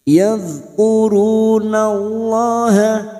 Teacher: Kita uraikan dari kata wala, lam alif 2 harokat. Wala yadh, huruf dzal jangan sampai memantul karena bukan qalqalah